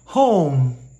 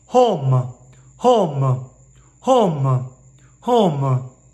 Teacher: you hear the little ooh at the end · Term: diphthong